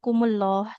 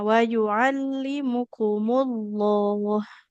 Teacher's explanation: lamnya tebal jadi tidak kumullah, tapi wa yu'allimukumullah